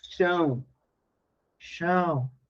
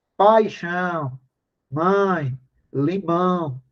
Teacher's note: o som sai integralmente pelo nariz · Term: nasal